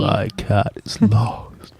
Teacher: That was breathy, but not gravelly.